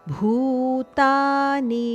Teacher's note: ಭೂ ಮಹಾಪ್ರಾಣ ಭೂ ಹಾಗೂ ಮುಂದೆ ನಿ ಹರಸ್ವ